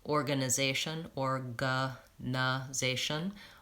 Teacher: those are all the unstressed schwa and those are usually short in durations